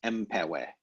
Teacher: The skies or the heavens plural is, we would expect enpewe, but of course the n assimilates to the following p and becomes empewe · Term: assimilation